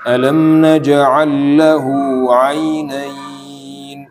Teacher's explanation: ainain itu boleh agak panjang dikit ya, sampai 4 harokat. Itu mad arid li sukun. Atau bahkan sebagian ada yang bacanya sampai 6 kadang.